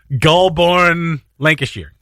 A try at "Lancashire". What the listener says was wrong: Sheer. Lancashire. The sheer, the shire. Like, we dropped that nonsense.